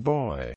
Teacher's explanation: Since the consonant is also oral, with no nasal outlet, the airflow is blocked entirely, and the consonant is a stop. Its place of articulation is bilabial, which means it is articulated with both lips. Its phonation is voiced, which means the vocal cords vibrate during the articulation. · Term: voiced bilabial stop